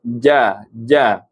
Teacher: Huruf jim tengah lidah. Nampak tuan-puan? Tengah lidah diletakkan di langit. Tengah lidah diletakkan ke langit.